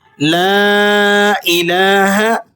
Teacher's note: لام الف مد زبر لا، تو اسے آپ نے 4 الف تک اوپر کر کے لمبا کر کے پڑھنا ہے۔ اس لام پر کھڑا زبر ہے، تو کھڑا زبر والا حرف وہ 1 الف کی مقدار کھینچ کر پڑھا جاتا ہے۔